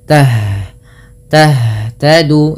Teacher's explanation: ha itu merupakan salah satu sifatnya adalah Hames Hames artinya mengalirnya nafas yang kedua h juga termasuk namanya sifat rakhawah mengalirnya suara dan